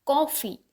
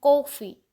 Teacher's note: क first syllable पे primary stress आ रहा है, कॉफ़ी। को पे थोड़ा हम ज़्यादा स्ट्रेस, हाई पिच दे रहे हैं।